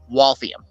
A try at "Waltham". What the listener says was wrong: You're adding an I in there that doesn't exist.